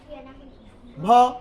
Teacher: উষ্ট উচ্চারিত ঘোষ বর্ণের মহাপ্রাণ ধ্বনি